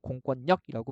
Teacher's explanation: 얘는 공권과 력의 구조로 되어 있는 거예요. 그래서 공권력이라고 비음화 일어나는 겁니다.